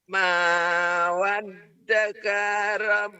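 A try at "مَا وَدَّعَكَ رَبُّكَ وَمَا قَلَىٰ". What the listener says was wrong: Bukan waddaka. Ma wadda'aka hanya ketinggalan.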